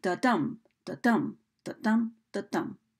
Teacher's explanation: Might notice that one of those beats is just a little bit stronger than the other, similar to the beat of a heart, where you've got one unaccented syllable and an accented syllable in each set of beats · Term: iambic meter